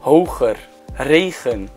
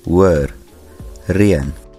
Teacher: Between two vowels, the Dutch G and V consonants are omitted in Afrikaans.